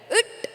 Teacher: இட் என்று ஒலிக்கும் போது நாக்கு பின்னோக்கி வளைகிறது. அதே போன்று இட் ஒலிக்கும் போது நாக்கு சிறிதளவு பின்னோக்கி மடிகிறது.